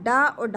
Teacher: डा, और ढा जो है वो मूर्धा में आते हैं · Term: मूर्धन्य व्यंजन